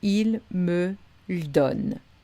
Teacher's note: S'il y a deux syllabes de suite ou plus avec un E muet, on fait l'alternance, c'est-à-dire on garde le premier, on supprime le deuxième